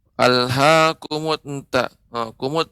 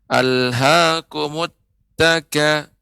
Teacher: Nah, jadi ada seperti pantulan di dalam. Seharusnya pengucapan ta ketika tasydid benar-benar murni. Tidak ada suara yang lain, cukup ditekan.